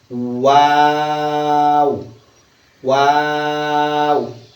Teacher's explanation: গোল থেকে শুরু হবে, আবার সরবে, আবার গোল হবে।